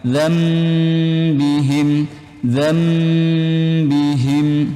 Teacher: Cara bacanya seperti nyebut huruf mim. Zam, dirapatkan bibirnya. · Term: iklab